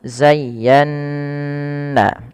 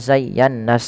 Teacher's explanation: Ya ynya dilembutkan zayya baru ditekan lagi ke Nun zayyanna nah pada lafal Nun yang bertasydid ini wajib ditahan bunyi n-nya karena ia ada bacaan gunah